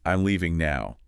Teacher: Then falling intonation. The voice goes down. This signals certainty, finality, often at the end of a statement.